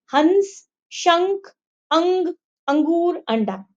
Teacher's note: हम जब इनको बोलते हैं ना तो ये हमारी नाक से निकलने वाली ध्वनियां होती है, उन्हें अनुस्वार कहते हैं।